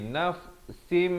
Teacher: tanwin bertemu mim masuk beserta dengung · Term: idgham bi gunnah